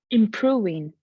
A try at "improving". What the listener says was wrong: You made another very, very common mistake, which is a common mistake for people who have good pronunciation, because you said w instead of v. You overdid it. Okay. So it's just the Ukrainian v, improving. So your top teeth need to touch your bottom lip. V, v.